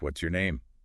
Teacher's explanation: T plus Y often makes a ch sound